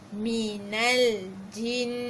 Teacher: Jin tu pun dengung dua harakat.